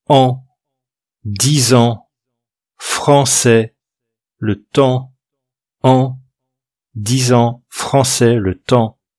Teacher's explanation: On les prononce un peu avec le nez. Ici, c'est comme un A, en imaginant que vous avez le nez bouché, vous parlez comme ça. Ça fait an, 10 ans, français, le temps, an, 10 ans, français, le temps. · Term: voyelles nasales